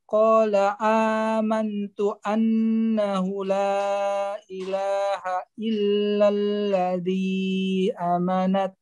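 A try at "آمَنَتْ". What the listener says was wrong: A-nya panjang Pak. A yang seperti ini panjang Pak ya. Ini mad badal namanya Pak. Amanat ya, seperti itu Pak.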